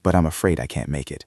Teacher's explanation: your voice should drop slightly to show that the decision is final